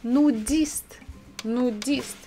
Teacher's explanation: we stress the last syllable